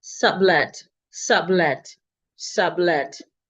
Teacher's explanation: The first vowel retains its normal vowel sound, sub. The second vowel also retains its expected vowel sound, eh. None of them is reduced. · none of the syllables, none of the vowels rather, is reduced. The first vowel retains its normal vowel sound, sub.